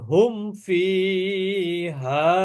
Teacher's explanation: এখানে হুমে কিন্তু গুন্না নাই কারণ কি এরপরে ফা অক্ষর আছে ফা তো আর ইকফার অক্ষরও না এদগমেরও অক্ষর না এজন্য এখানে